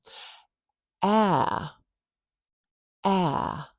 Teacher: We call it the trap vowel because the ah sound is in trap. This is a very low vowel sound. It's not in a lot of languages.